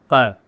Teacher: यह दंतोष्ठ, दांत होंठ को टकराएंगे फारसी भाषा में